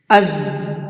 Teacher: ذالکم ازکا لکم واطہر، ازکا، یہ زا ہے، زا کے ساؤنڈ میں سیٹی ہوتی ہے، از، یہ جو ساؤنڈ نکل رہا ہے یہ ساؤنڈ صرف زا کے اندر ہوتا ہے، باقی نہ دال میں ہوتا ہے، نہ ضا میں ہوتا ہے، نہ ضاد میں ہوتا ہے، اور اس کو تھوڑا سختی کے ساتھ میں پڑھتے ہیں۔